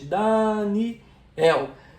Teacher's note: Repara que o el é a palavra mais forte. É o meu som mais forte. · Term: Oxítona